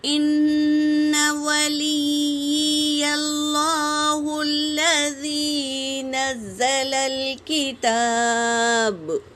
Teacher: ان ولی اللہ الذی نزل الکتاب، نون پر تشدید ہے میری بہنوں، غنہ کریں گے، اور یا پر تشدید ہے، اسے 2 بار پڑھیں گے